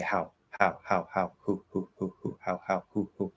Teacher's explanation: So that ow is much more open. There's a lot more space coming out, or a lot more space for the sound to come out.